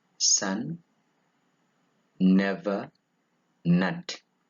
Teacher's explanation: it is a voiced alveolar nasal